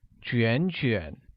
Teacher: the same word pronounced twice with a falling rising tone